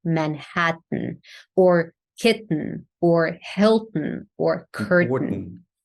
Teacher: Manhattan with a t that actually goes through the nose so the tongue can be in the T position same as time or tell but then you release the air through the nose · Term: nasal te, nasal T